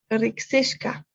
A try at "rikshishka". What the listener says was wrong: Ya, en ese tuviste un pequeño problema cuando lo dijiste por primera vez. decir Rixi y después ese shka no te salió tan bien?